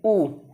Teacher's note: ऊ को बोलने में आपकी ओष्ठ की आकृति देखिए गोलाकार हो जाती है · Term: वृत्तमुखी